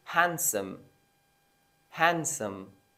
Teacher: the D is going to be dropped in this word